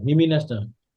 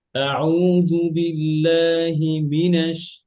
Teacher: أعوذ بالله من الشيطان الرجيم আচ্ছা, ইয়া ভাইকে আরেকটা কথা বলি, বিল্লাহি এটা একটা শব্দ, আবার মিনাশ আরেকটা শব্দ, যেমন আউযু বিল্লাহি মিনাশ না হয়, হিমিনাশ না হয়, আউযু বিল্লাহি মিনাশ, মিতে উপরে উঠে হবে, ঠিক আছে? আর হির আওয়াজটা একটু নিচু থাকবে, মির আওয়াজটা উপরে থাকবে। মানে হির আওয়াজ না উপরে উঠে গেলে হয় কি, হিমিনাশ শোনা যায়, হিমিনাশ বুঝা যায়।